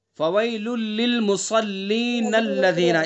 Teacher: اگر ہم اس کو ملا کر کے پڑھیں گے تو پھر نون کو لام میں ملائیں گے فویل للمصلین الذین اس طرح سے پڑھیں گے نون کو لام